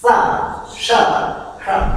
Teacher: तो ऐसा नहीं, इनके तीन सकार हैं। एक है दंती सकार सा, एक है तालव्य शकार श और एक है मूर्धन्य शकार श